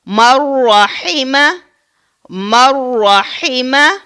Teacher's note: نون ساکن کے بعد پھر را آ رہا ہے تو اس کو ہم بغیر غنہ کے ادا کریں گے